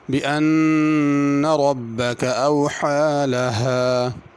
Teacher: اوحا میں بڑی حا ادا کرنی ہے اور اس کو ذرا کھینچنا ہے کیونکہ کھڑی زبر، اوحا لہا غلط ہوگا۔